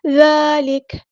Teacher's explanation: دال پہ کھڑا زبر ہے تو مد اصلی کریں گے اور دال کو نرمی سے ادا کریں گے